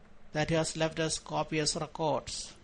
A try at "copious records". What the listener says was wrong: Wrong word stress here. Copious records, not records. If you use record, you're using it as a verb. If you say records, you're typically using it as a noun.